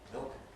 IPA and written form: mɪɫk (milk)